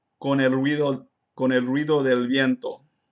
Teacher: I did not mess up the bilabial voiced fricative in the phrase con el ruido con el ruido del viento